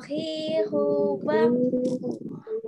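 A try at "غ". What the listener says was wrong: Kedengaran sandi, kedengaran ini semoga bukan sandi aja ya. Kedengaran sandi masih ke huruf kho, nyasar ke huruf kho dia. Karena nggak ada power tekanan dari huruf ghain-nya. Huruf ghain ketika dikasih dia harokat jadinya ghirubau. Bukan khohirubah gitu.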